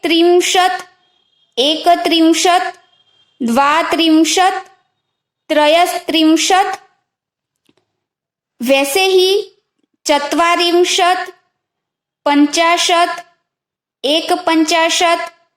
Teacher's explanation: ये सभी में त आधा बोलते हैं। हम ऐसा नहीं बोलते कि त्रिंशत, त पूरा नहीं, अगर बोलेंगे ना तो ऐसा उच्चारण होगा कि त्रिंशत, पर हम आधा बोलते हैं तो सिर्फ त्रिंशत तक आधा बोल के रुक जाना है।